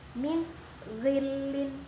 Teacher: nun sukun bertemu dengan ghain, maka bacaan nunnya itu jelas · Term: idhar